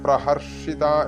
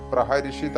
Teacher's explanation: പ്രഹർഷിത എന്നുള്ളതിന് പ്രഹരിഷിത ആ എന്നുള്ള അക്ഷരത്തിനെ രി എന്നാക്കിയിട്ടാണ് ഉച്ചരിക്കാറുള്ളത് ഞാൻ പഠിച്ചതും അങ്ങനെ ആയതുകൊണ്ടാണ് ഇവിടെ പ്രഹരിഷിത എന്ന് ചൊല്ലിയത് പ്രഹർഷിത എന്നും ചൊല്ലാം